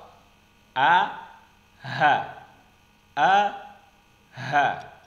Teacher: keluar dari tenggorokan bagian bawah